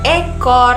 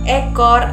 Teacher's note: Nah, kemudian naik ke atas itu ada huruf huruf E. Huruf E itu terletak pada media atas depan dengan posisi mulut itu di antara semi terbuka dan semi tertutup